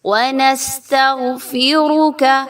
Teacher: Next ونستغفرک، سین سیٹی کی آواز، غین کو پر پڑھا جائے گا۔ غین جو ہے وہ حروف مستعلیہ میں سے ہے اور موٹا پڑھے جانے والا حرف ہے۔